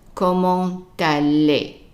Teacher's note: The t at the end of a word is usually silent, so it's comment, comment. Now, since we have a word that starts with a vowel after, then we would pronounce the t, because we will attach the t to the next word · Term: liaison